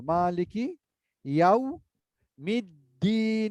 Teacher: মালিকি, মা এক আলিফ টানবো